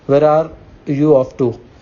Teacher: notice the falling intonation since this is an information question not a yes no question